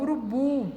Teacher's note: é uma oxítona, porque a sílaba mais forte dessa palavra é a última. Linguiça é uma paroxítona também, porque a sílaba mais forte dela é a penúltima.